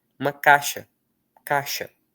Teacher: O i é tão fraquinho que os mineiros, por exemplo, os meus conterrâneos, pronunciam sem a sem o som de i.